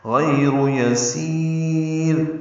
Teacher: وقفاً مد عارض سکون بن گئی، را باریک ہے، غیر یسیر، را تو وقفاً وصلاً دونوں طرح ہی باریک ہے